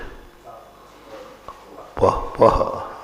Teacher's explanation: पा अक्षर के साथ जब आधा विसर्ग आएगा वो ओंठ से बोला जाए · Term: उपध्मानी